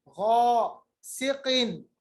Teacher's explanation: गैन को मोटा पढ़िएगा, ये भी अदना हलक से है। गासिकिन, किन, क़ाफ भी मोटा अदा होता है।